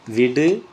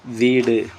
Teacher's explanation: குறில் நெடில் மாற்றம் பொருள் வேறுபாடு.